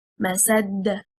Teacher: It means fiber, and a single static dal with a qalqalah. If we stress on the second harakah, harakatil seen, and we say masad, we separated the word into two words, and الدال became mushaddada, the highest rank of qalqalah.